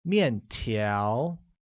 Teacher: uses a falling tone on the first A and a mid-rising tone on the second